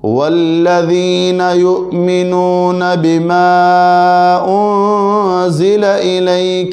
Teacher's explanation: اب یہاں پہ ذا ہے، دیکھو والذین میں ذال ہے، ذال زبان دانتوں کے درمیان، اور ذا کو ہم نے سخت پڑھنا ہے